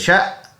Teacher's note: شین حمزہ زبر شا جھٹکے کے ساتھ پڑھیں گے